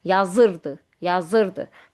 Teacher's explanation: Burda d idinin qısaldılmışdır və qəbul etmir vuruğu. Burda ırın üzərinə düşəcək.